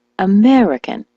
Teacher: the word American, as you know, is stressed on the me